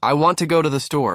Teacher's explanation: You stress want go store. The rest I to the disappear into the rhythm. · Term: content words